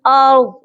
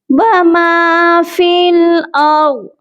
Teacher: वाद जो है हैवी लेटर है, इसको हम मोटा करके पढ़ेंगे